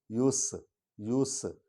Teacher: سین سیٹی کی آواز نکلے گی